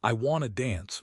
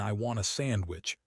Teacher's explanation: Want a and want to both reduce to wanna.